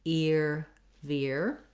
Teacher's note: That's another way we typically spell this ear sound. So we go from a tense E into our ear. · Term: ear diphthong